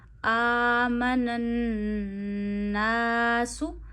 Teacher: الف سے پیچھے پھر زبر آئی، الف مدہ ہوا، الف کو کھینچیے ایک انگلی جتنا، آمن الناس۔